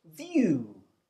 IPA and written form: vjuː (view)